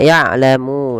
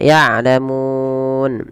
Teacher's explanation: Nah, ini kita namakan mad arid disukun, yaitu ketika adanya huruf sukun arid ya, sukun yang dia waqaf karena sukun yang diwakafkan karena di ketika waqaf nun awalnya ya'lamu. Nah, karena dia waqaf dimatikan nunnya